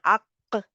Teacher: कलकला होता है, एक आवाज बाउंस होके, जब हम आवाज जुबान पीछे करते हैं तो आवाज जो है वो हमारी पलटती हुई, एक तो होता है ना पीछे हुई और फिर पलटती हुई आवाज सुनाई देती है हमें।